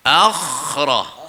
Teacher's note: Tapi huruf kha ni huruf hamas, dia terlepas angin dia tu.